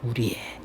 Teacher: 조사의는 의로 발음하는 게 원칙인데 에로 발음할 수도 있어요.